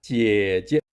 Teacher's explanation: The pronunciation of the first character in 姐姐 is 姐 while the second 姐 has a shorter pronunciation duration than the first 姐 This shorter pronunciation is not associated with the 4 Mandarin tones but is considered a neutral tone.